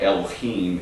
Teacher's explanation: the H uh in the Hebrew language is always pronounced it's got a hard guttural sound